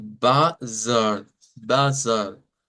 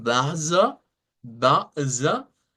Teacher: Luego tenemos una que nos dice que no vamos a usar un sonido de R. De hecho, la R se olvida en esta parte y nos aparece un sonido de A media.